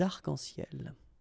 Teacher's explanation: we don't really pronounce this final S, so phonetically it's almost the same, but then we've got this liaison between the two, des arc-en-ciel.